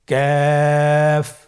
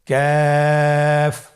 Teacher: কাফের মাখরাজ হলো জিহ্বার গোড়া থেকে একটু আগে বাড়িয়ে তার বরাবর উপরে তালের সঙ্গে লাগিয়ে উচ্চারিত হয়।